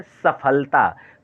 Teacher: और ये जो दंत्य स, स जैसे सफलता, तो जीभ जो है दांत को नीचे वाले हिस्से को स्पर्श करती है, तब जाकर के ये ध्वनि निकलता है